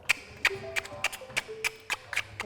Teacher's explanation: es un click lateral lo haces con el lado de la lengua en la parte de atrás